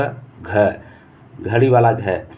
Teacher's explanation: इसका उच्चारण स्थान क्या होगा, कंठ होगा। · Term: कंठ ध्वनि